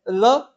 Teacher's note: वह व्यंजन जिसके उच्चारण में प्राणवायु जो है जीवा के अगल बगल से निकलती है, उसे पार्श्विक व्यंजन कहा जाता है